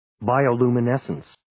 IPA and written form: ,baɪoʊ,luːmeɪ'nesəns (Bioluminescence)